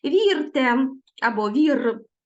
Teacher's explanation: тут твердо вимовляється звук ри